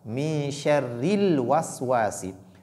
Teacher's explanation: la lettre ra, ici, qui porte la voyelle courte kasra, elle est lue de façon légère. Donc, bit tarqiq, min sharril waswasi.